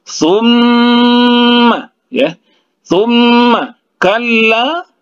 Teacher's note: Jadi ada dua, ada nun bertasdid, ada mim bertasdid, jadi itu didengungkan. Summa, ya. Summa kalla, dua harakat, ya, dua harakat. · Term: gunnah musyaddah